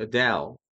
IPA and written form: əˈdeɪl (Adele)